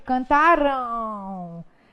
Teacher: Ditongo, porque as duas vogais pronunciadas aparecem na mesma sílaba. Nasal, porque quando eu digo cantaram, dá uma vibradinha no meu nariz. E decrescente, porque o A é mais forte que o O, então há uma relação hierárquica entre essas duas vogais, fazendo com que eu diga que há uma relação de decrescência. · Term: ditongo nasal decrescente